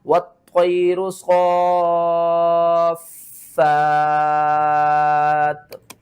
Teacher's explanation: دو زیر کو آپ نے ختم کرنا ہے، تا کو ساکن کرنا ہے، اس سے پہلے دیکھیں تو فا ہے، فا کو کھینچ کر تا کے ساتھ ملانا ہے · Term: مد لازم کلمی مثقل